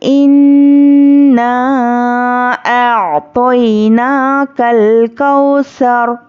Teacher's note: आयत पर हम क्या करेंगे, आखिरी हर्फ पर जज़म देकर सांस तोड़ेंगे। जब रॉ पर जज़म देंगे तो रॉ साकिना से पहले ज़बर रॉ पुर होगी।